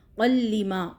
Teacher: لام 2 بار، ایک بار قاف کے ساتھ ایک بار اپنی حرکت کے ساتھ